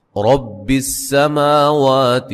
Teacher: را کو موٹا ادا کریں گے، سین کو باریک سیٹی سے. ما وا دونوں پہ مد اصلی ہے.